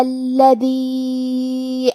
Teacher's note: کلمت الذی میں حرف اللام پہ تشدید ہے، لہذا ہمیں 2 حرف کے برابر لام کو پڑھنا ہے